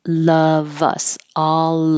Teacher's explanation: is before a word that begins with a vowel so now you keep the V and it will connect to the vowel so it will sound like love us all